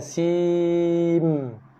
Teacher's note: Terus tutup mulut. Kita tak melafazkan lagi dah makhraj nun. Sebab sudah diidghamkan, dinamakan idgham ma'al gunnah. Diidghamkan ataupun dimasukkan bacaan nun ke dalam mim.